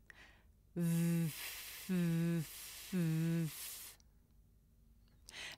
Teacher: When I make a voiced sound like v, my throat vibrates.